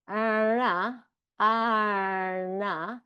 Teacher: it sounds like there's an R quality to it from the action of me pulling my tongue into my mouth between the syllables